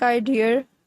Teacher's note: adds an r sound to some words ending in a